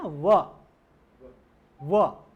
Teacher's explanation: दांत और औष्ठ से बोला जाएगा, जैसे हम बोलते हैं ना व, तो हमारी जिह्वा लेश मात्र मतलब बहुत कम जो है वो दांतों के भी स्पर्श करेगी और औष्ठ से भी उसको बोला जाएगा। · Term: दंतोष्ठ